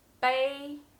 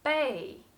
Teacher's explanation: two pronunciations bae the first tone and bae the fourth tone